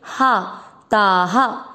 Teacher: शब्द पूरा होने के बाद ता में आ की मात्रा तो विसर्ग को पढ़ेंगे हा